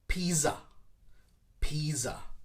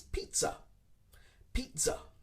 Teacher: in english we actually add a t sound in the middle of the word which is strange because there is no t in the spelling